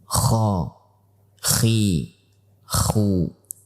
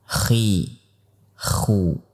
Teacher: Ingat, huruf kha adalah bagian daripada huruf hams. Sehingga pada saat kita mengucapkannya, kita akan merasakan adanya nafas yang mengalir.